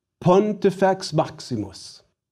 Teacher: So where did we place our stress accents? On the antepenults, that is, id est, on the third to last syllable.